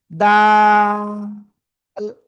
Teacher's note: জিহ্বার আগা সামনের উপরের দুই দাঁতের গোড়ায় লাগান, লাগিয়ে তিন আলিফ টানে উচ্চারণ করতে হবে, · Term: দাল